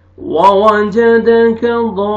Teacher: 4 से 5 अलिफ के बराबर आपने खींच के मिलाना है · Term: मद्दे लाजिम